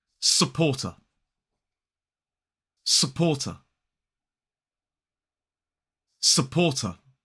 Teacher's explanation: we don't pronounce the R in this syllable because it comes immediately before a consonant sound. And then the final syllable is t.